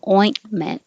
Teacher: the tongue goes up and you hold it there and just close your lips for the M. Ointment. This is a word from French, so the E here sounds like A.